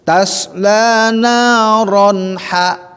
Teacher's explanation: Izhar halaknya artinya jelas tidak berdengung.